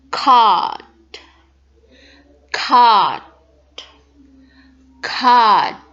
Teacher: The British is going to use ah, ah, ah, or long ah to say card, card, card. No R on British.